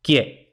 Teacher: ye es un diptongo por qué porque tenemos una vocal cerrada y luego tenemos una vocal abierta